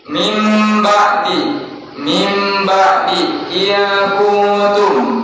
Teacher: nun mati menghadapi huruf ba, makanya itu wajib ditahan karena hukumnya itlaq, ditahan. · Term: gunnah